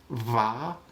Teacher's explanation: so again bilabial fricative that would be something like va